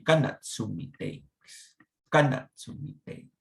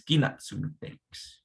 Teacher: sometimes the sound ga, ga, ga is pronounced gi, gi, gi.